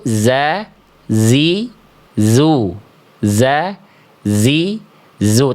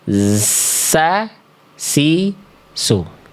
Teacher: huruf sin itu dia berdesis dengan mengalir suara dan mengalir nafas. · Cuman beda nafas, huruf yang keluar bisa beda. Yang satu nggak pakai angin, yang satu pakai angin.